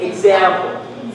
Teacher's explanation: They are pronounced as either IGS or EGS. So there's a GZ sound.